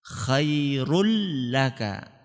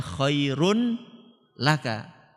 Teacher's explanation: Nun tanwinnya tadi dimasukkan ke huruf lam sehingga tanwinnya enggak kelihatan khairulaka enggak kelihatan kan bukan bacanya Khairun laka tanwinnya itu seakan-akan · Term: idgham bila ghunah